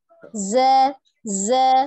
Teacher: huruf zai memiliki sifat asofir, tetapi tidak dibaca dengan tebal. Tidak za, za, tidak. · hanya dia memiliki sifat asofirnya desis ya